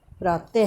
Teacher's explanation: विसर्ग का उच्चारण ह के समान होता है